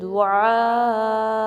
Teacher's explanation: مد متصل کی جو کاؤنٹس ہیں وہ 4 to 5 کاؤنٹس ہیں، ٹھیک ہے۔ اس میں آپ نے دعا پڑھنا ہے اور حمزہ پہ شارپلی سٹاپ کرنا ہے، ٹھیک ہے؟